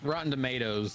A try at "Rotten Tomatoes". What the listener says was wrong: I'm sorry, did you just say tomatoes? Okay, it sounded like you said Rotten Tomatoes. I was like, okay, the T is silent to him. the T is a D in his language.